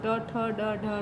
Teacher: इनका उच्चारण करते समय जिह्वा के ऊपर के दांतों के साथ ऊपर खुरदरे हिस्से का स्पर्श करती है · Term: मूर्धन्य